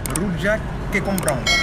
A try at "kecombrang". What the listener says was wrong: Rojak kecombrang. En fait, le C, c'est ch en indonésien. Kecombrang.